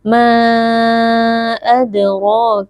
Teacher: huruf Dal sukun posisinya ada di tengah-tengah kata merupakan bacaan Qalqalah Sugra bunyi Dal sukunnya dipantulkan · adraka cara membacanya Mad Jaiz munfasil dipanjangkan empat atau enam harakat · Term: qalqalah sughra